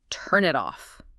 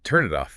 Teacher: That N sound flows right into the I and the T flows right into the eye. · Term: Linking